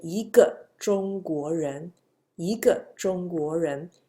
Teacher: It's a falling, drastic falling tone. When it goes before a falling tone, fourth tone, E become a second tone.